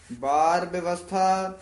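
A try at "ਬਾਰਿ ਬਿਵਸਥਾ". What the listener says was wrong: ਬਾਰ ਵਿਵਸਥਾ ਉਚਾਰਨ ਕਰਨਾ ਹੈ, ਬੱਬੇ ਤੋਂ ਚੱਕ ਕੇ। ਬੱਬੇ ਦੋਵੇਂ ਨਹੀਂ ਬੋਲਦੇ ਨੇ, ਵਿਵਸਥਾ ਨਹੀਂ ਕਹਿਣਾ, ਇਹ ਵਿੱਚ ਵਾਵਾ ਵੀ ਹੈਗਾ। ਵਿਵਸਥਾ, ਬਾਰ ਵਿਵਸਥਾ ਤੁਝੇ ਹੈ ਪਿਆਰਾ ਦੂਧ।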